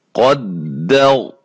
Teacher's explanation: یہاں ہم نے غنہ تھوڑا سا کر کے وقف کرنا ہے، ساکن کر کے عام، ٹھیک ہے۔ قدر، را کو موٹا کرنا ہے کیونکہ را ساکن ہو جائے گی وقف کی صورت میں، اور اس سے پہلے زبر ہے، ٹھیک ہے۔ اسی طرح اس کو قلقلہ کر کے وقف کرنا ہے۔